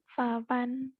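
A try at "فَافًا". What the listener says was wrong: Fafan. Jangan juga ya orang Sunda. F-nya. Fafan gitu.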